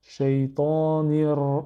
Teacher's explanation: on va faire la liaison, pas avec le alif, ni avec le lam, mais avec le ra, le premier ra, parce que c'est une lettre solaire, il a une shadda.